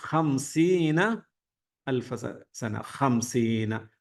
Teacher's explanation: ഹ തൊണ്ടയിൽ നിന്ന് പറയാൻ ശ്രദ്ധിക്കുക